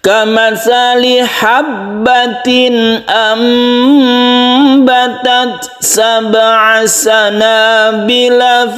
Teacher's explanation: Kamathali habbatin ambatat, ini kita dengungkan. Nun mati bertemu dengan ba, ini kita panjangkan sedikit. Jadi melebihi dari matobi'i ya, sehingga sempurna bacaan iklabnya. · Demikian juga yang nun mati bertemu ba yang sini, ini namanya iklab. Iklab itu suaranya menjadi mem, sehingga ada tulisan mem yang kecil di sini. Ini berubah dari nun menjadi mem, itu namanya iklab dan hurufnya cuma 1.